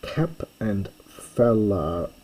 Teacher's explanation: the t becomes a p before the f